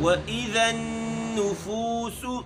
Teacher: نون کے اوپر تشدید ہے، یہاں غنہ کریں گے، اور فو فا کا مخرج چونکہ میں پہلے بھی عرض کر چکا ہوں، فو فا پڑھتے ہوگا زیادہ یہ بھی نہ ہو اور زیادہ جماؤں کے ساتھ ایسا بھی نہ ہو، بلکہ درمیانی طریقے سے۔